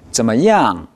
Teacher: 怎么样? 할 때 NG 발음을 생략하지 마십시오. 怎么样? 붙여서 하겠습니다.